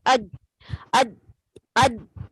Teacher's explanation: جیم میں آپ کا مخرج بند ہوتا ہے، اس میں شدت پائی جاتی ہے · جب آپ جیم ادا کرتے ہیں تو آپ کی زبان ہارٹ پیلٹ کو پورا ٹچ کرتی ہے، جس کی وجہ سے بند ہو گئی ہے. اب اس کے پاس آگے جانے کا راستہ نہیں ہے.